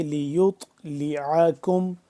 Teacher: نہ اللہ لیط، لیعکم، لیط لام زیر لی یا طا پیش یط، طا ساکن ہو گیا تو طا کے اوپر قلقلہ کریں گے